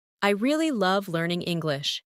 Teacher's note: Emphasize really and love